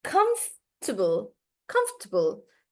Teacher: The stress is on comf. Comf. So stress is on the first part. So you say comf and this then table.